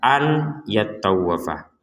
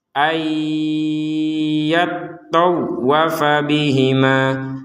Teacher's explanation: Yang perlu dijelaskan untuk potongan ayat ini adalah ada nun sukun bertemu ya di sini, maka kita membacanya nun sukunnya dimasukkan kepada huruf ya, sehingga tidak lagi dibaca an yattawwafa.